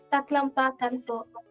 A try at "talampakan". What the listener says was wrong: Yeah, talang. Talampakan. I think there's no K. Talampakan. Maybe it's not taklampakan. It's talampakan, I think. There's no K there.